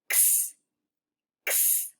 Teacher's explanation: So we're going to open our mouth just a little bit and we're going to make the sound in the back of our throat.